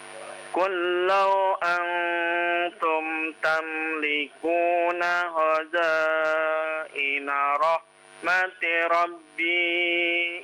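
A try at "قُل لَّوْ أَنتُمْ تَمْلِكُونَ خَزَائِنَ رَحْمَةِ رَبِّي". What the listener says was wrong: jangan dipanjangkan.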